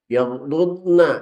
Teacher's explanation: mohon jangan dikolkolahkan karena dhad juga bukan huruf qalqalah